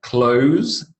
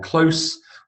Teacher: close with a z sound the verb and close with a s sound is the adjective